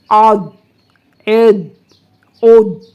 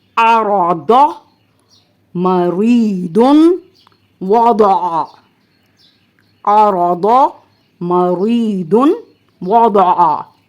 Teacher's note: ضاد کو ادا کرتے وقت زبان کی کروٹ جو ہے اوپر کی داڑھوں سے لگتی ہے